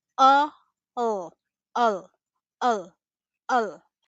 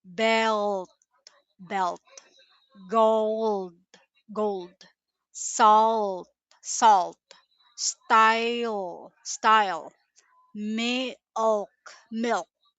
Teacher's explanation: Your tongue still touches the top, but the back of your tongue pulls slightly back, creating a deeper, heavier sound. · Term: dark L